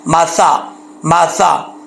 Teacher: اگر W shape ہوتی تو پھر یہ شین پڑا جاتا، لیکن یہاں پر ایک ہی ڈنڈا ہے، ڈبلیو شیپ نہیں ہے، تو یہ سا ہے، بغیر سیٹی کے پڑھا جائے گا، نارمل سختی سے نہیں پڑھا جائے گا۔